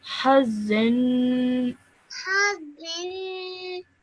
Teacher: make sure you stretch that nasal sound at the end for 2 seconds